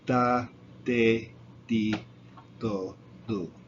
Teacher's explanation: I say it by putting my tongue on the back of my teeth.